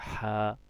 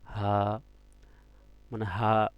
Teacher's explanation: এই হাটা উচ্চারণ হবে গলার ভিতর থেকে হা, আর হায়ে হাওয়াজটা উচ্চারণ হবে হা, মানে হা, হালকা করে গলার ভিতর থেকে বাতাস বের হবে